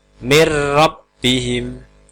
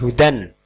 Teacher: Cara baca hukum ini adalah nun sukun atau tanwin tadi dibaca masuk tanpa dengung ke huruf berikutnya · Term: idgham bilahunah